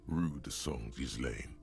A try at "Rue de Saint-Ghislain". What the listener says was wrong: That's not how you pronounce Rue de Saint-Ghislain. You don't pronounce the S, Ghislain, basically.